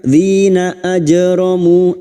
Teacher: jim sukun yang mati asli di tengah kalimat qalqalah sugra. Ajramu mu dimati ikuti waw sukun 2 harokat mad tabi'i.